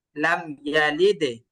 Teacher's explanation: ভাইজান, ডালগুলো কলকলা হয় নাই, ডালগুলো আরো কলকলা করতে হবে, ধাক্কা দিতে হবে, নিচের দিকে নিতে হবে।